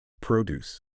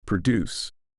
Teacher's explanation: To help relate this concept to English, think of the word produce. When stressed on the first syllable, produce, it refers to fruits and vegetables. But when the stress shifts to the second syllable, produce, it means to create.